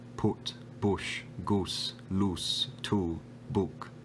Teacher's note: the put vowel merging into the goose vowel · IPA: [u]